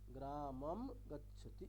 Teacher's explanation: অনুস্বারের জায়গায় যে মটা বসাবো সেটা হচ্ছে ময়ের নিচে একটা হসন্ত হবে, অর্থাৎ কেবলমাত্র ময়ের উচ্চারণটাই হবে, কোনো স্বরবর্ণ ওখানে থাকবে না